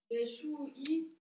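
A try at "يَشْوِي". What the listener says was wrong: Yashwi. Yashwi, où t'as vu le bas? Yashwi.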